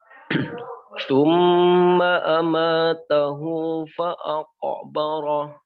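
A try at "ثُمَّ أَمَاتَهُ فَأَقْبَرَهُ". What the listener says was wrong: Naam, masbuk, barakallahu fiik.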